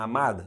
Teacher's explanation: a sílaba tônica não é a última, é a penúltima. Então a palavra é uma paroxítona, amada.